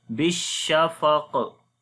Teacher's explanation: On the sheen, we make tafashi quality, and on the qaf, again heavy sound and qalqala, which is the strong qalqala right now if you stop.